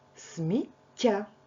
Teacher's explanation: В кожному слові є подвоєння м'якого приголосного звуку